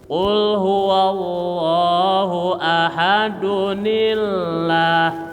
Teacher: Ini kalau enggak disambung. Kalau disambung dari ahad sama Allah itu mengeluarkan nun kecil.